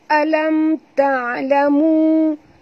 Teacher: Alam ta'lamu mim mati bertemu ta. Ya. Tak boleh dengung juga izhar syafawi